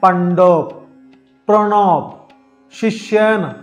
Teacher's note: জিহ্বার অগ্রভাগ উল্টিয়ে মূর্ধায় স্পর্শ করতে হয়